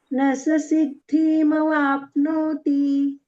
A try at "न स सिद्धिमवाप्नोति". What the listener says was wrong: सिद्धी नाही म्हणायचं, ऱ्हस्व आहे. न स सिद्धिमवाप्नोति, ती ऱ्हस्व आहे. धीला थांबू नका, तो दीर्घ होतो मग.